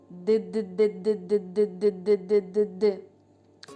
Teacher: коли ми кажемо звук д кінчик язика знаходиться за верхніми зубками а губи набувають положення наступного голосного